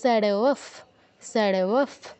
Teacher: বিসর্গর পর প বা ফ থাকলে আমাদের বিসর্গের জায়গায় ফয় হসন্ত উচ্চারণ করতে হয়